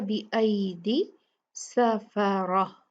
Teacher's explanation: रा जो है वो हैवी होगा, मुफख्खम होगा, भारी पड़ा जाएगा क्योंकि इस पे फतहा ज़बर है।